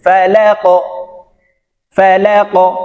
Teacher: এই কফ উপরের দিকে ধাবিত করে উচ্চারণ করতে হবে। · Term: কলকলা